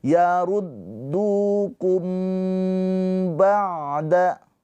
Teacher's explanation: Mimnya ditahan dua harakat. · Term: ikhfa syafawi